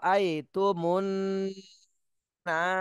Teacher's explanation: প্রথমে ওয়াজিব গুন্না করে তারপরে এক আলিফ টান দিতে হবে